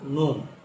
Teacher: জিহ্বার আগা তার বরাবর উপরের তালুর সাথে লাগিয়ে একটি হরফ